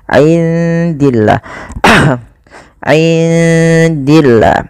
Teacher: Kemudian pada lafal indillah, indi di sini ada bacaan ikhfa, maka suara nunnya samarkan kepada huruf dal